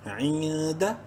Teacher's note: نون ساکن کے بعد دال حروف حلقی میں سے نہیں ہے، اخفا کریں گے اس نون میں